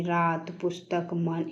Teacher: हिंदी के प्रत्येक शब्द के अंतिम अ लगे वर्ण का उच्चारण हलंत सा होता है।